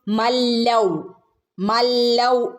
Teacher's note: നൂനിന് ശേഷം ലാമോ റോ ഓ വന്നാൽ എന്ത് ചെയ്യരുത് മണിക്കരുത് കൂട്ടിച്ചേർത്ത് ഓതി പോണം